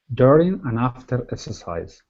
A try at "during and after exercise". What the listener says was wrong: Okay, give me a good R there instead of after. After. During and after exercise.